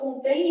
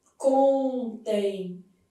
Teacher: E na hora que eu faço contém, esse M vai ter som semivocálico. Então, vai ter som de I.